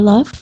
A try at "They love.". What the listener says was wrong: Perfeito.